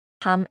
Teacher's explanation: 담 ends with final 미음. Close your lips and let the sound hum through your nose.